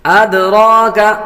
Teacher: دال حروف قلقلہ میں سے ہے اس لیے اس کو قلقلہ کریں گے